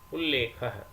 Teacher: यहां पर त को ल हो गया है क्योंकि बाद में लेख में ल परे है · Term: लत्व संधि